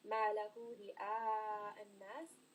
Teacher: Ra in this case is going to be light because it has a kasra. رئاء, and then also this is a 4-count med.